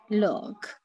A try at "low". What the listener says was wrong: No, this one, there's no cur, just low.